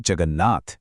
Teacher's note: अब वो तीसरे पर नहीं बल्कि सीधे पांचवें अक्षर पर पहुंच जाता है, और इससे बनते हैं कुछ बहुत ही दिलचस्प शब्द, जैसे जगत और नाथ जुड़कर बनते हैं जगन्नाथ। यहां त ने सामने वाले न को देखा और खुद भी न में बदल गया।